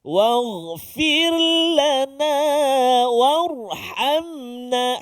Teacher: Yang akhir sekali huruf ra, warhamna, ra yang sukun atau ra yang mati sebelum dia balik atas. Maka ra tu bunyi tebal, bunyi tebal.